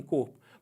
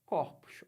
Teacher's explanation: é a mudança do timbre né da vogal o para vogal O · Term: metafonia